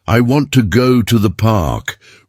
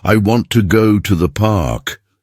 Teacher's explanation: If you listen closely, you'll notice that want, go, and park get more stress. The words to and the are softer. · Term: stress timed rhythm